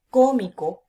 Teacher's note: es mi y la antepenúltima es oh y cuando yo digo cómico cargo la voz en la antepenúltima